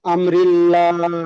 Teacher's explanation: আল্লাহ শব্দের ডানদিকে জের এসেছে তাই আল্লাহ লামকে বারিক অর্থাৎ লা পড়তে হবে